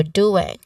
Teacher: Now, pronunciation wise, the word doing, it might sound tricky, you know it's doing, right? So there is a ng sound, which is a nasal sound at the end, and the first syllable here is stressed · the O sound here, it is immediately followed with the nasal sound, ng sound